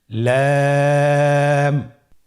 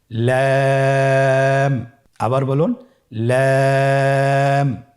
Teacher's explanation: লাম হরফটি উচ্চারণের ক্ষেত্রে অবশ্যই বারিক হবে এবং তিন আলিফ টেনে পড়তে হবে।